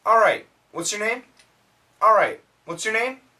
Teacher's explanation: When we say the word all right, actually you can skip the L sound. A lot of Americans, if you listen carefully, it sounds like alright.